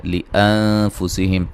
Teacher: नून साकिन का बारीक इख्फा है